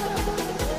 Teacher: dengan ras ayunkan lagi suaranya demikian huruf ra berikut huruf dza huruf dza dikeluarkan dengan ujung lisan kita hampir di atas gigi seri bagian bawah diucapkan dengan mengalir suara tanpa diiringi dengan udara sifat lain pada huruf dza karakter khasnya dia mirip dengan suara